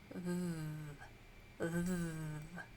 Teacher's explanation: so that you can feel and you're going to go V your vocal cords are vibrating V you should be able to feel that let's give it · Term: voiced th sound